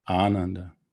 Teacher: the first a is long which puts the stress on the first letter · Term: long a, long A